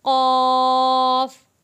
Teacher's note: क़ाफ़, मोटा भारी पुर पढ़ा जाने वाला लफ्ज़ क़ाफ़।